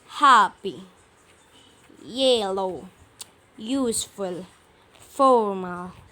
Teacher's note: Kalau dia adjektif terdiri dari 2 suku kata, maka yang ditekan adalah silabel yang pertamanya. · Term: first syllable